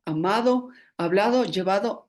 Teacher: este sonido se pronuncia como fricativa dental Sonora